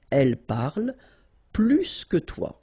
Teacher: plus will be with the S. So pronounce it plus que